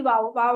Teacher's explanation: वाओ को पढ़ने के लिए होठों की नातमाम गोलाई यानी इसको नातमाम गोलाई का मतलब यह है कि अगर आप पूरा गोल करते हैं।